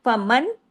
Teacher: اب دیکھیں کہیں اخفا نہیں ہے، ناک میں نہیں جائے گی آواز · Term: اظہار